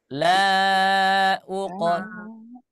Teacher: dipantulkan huruf qafnya karena huruf qaf memiliki sifat qalqalah